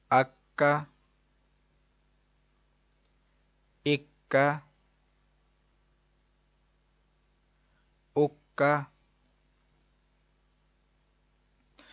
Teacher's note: اب یہ قوف حروف مستعلیہ بھی ہے، حروف قلقلہ بھی، ادھر قلقلہ مشدد ہے، موٹا بھی پڑھنا ہے اس کو اور جماؤ کے ساتھ بھی